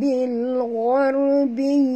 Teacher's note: ra itu mati baris eh, kita tahu dia mati huruf sebenarnya baris atas, maka kena baca tebal ra tafkhim ya